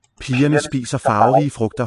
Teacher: The V is with not quite closure, not quite contact between teeth and lip.